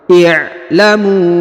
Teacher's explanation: Perhatikan huruf a sukun. Kemudian huruf mu dibaca panjang 5 harokat ya. Wawnya ini tidak dibaca ya.